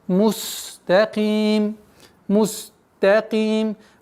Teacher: Так как син, свистящий звук, нужно дать полноту свойств, чтобы полноценно произносилось.